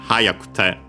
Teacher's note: Uh In its base form, dictionary form, is uh the accent is on the second-to-last mora. When uh conjugating into ku, in its continuative form, it moves on the third-to-last mora.